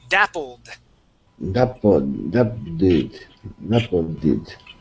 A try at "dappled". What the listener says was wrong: no you're you're pronouncing that did at the end okay so we want to say dappled